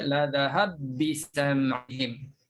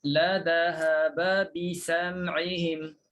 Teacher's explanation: Matikan ba pertama, sabdukan ba yang kedua, okey, baru boleh baca la dhahab bisam'ihim. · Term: idgham